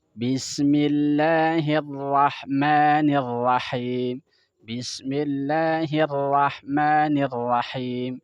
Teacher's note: Jadi huruf ra itu huruf istifal. Huruf istifal ketika diucapkan harus datar. Sebagaimana kita ucapin R.